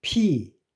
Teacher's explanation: 그래서 P 성대가 안 울리죠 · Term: 무성음